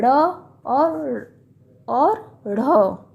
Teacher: उच्छिप्त का अर्थ है फेंका हुआ। इसमें उच्चारण के समय जीभ ऊपर जाकर तुरंत नीचे गिरती है, यानी कि ऊपर जो है फेंकती है और तुरंत नीचे गिर जाती है। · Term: उच्छिप्त व्यंजन